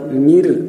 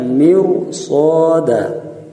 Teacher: Mirsada ini walaupun harkat kasrah, ro didahului harkat kasrah, tidak boleh dibaca tarqiq, bukan mir, tapi dibaca mirsada.